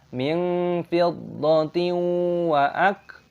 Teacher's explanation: sebuah kasr tanwin diikuti oleh wawu, aturannya adalah idgham bighunah, disisipkan dengan bunyi sengau. Min fidin waak, huruf kaf memiliki tanda sukun, bacalah waak tetapi jangan qalqalah, wa aa tidak diperbolehkan karena kaf bukan huruf yang memiliki gema atau qalqalah.